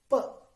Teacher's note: when we say P, the flow of air is stopped by the lips. So P is a consonant.